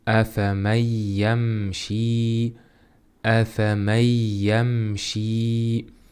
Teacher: Afamay afay bu yerda nunni y' ichiga kirgizamiz ya'ni ikkita qilamiz.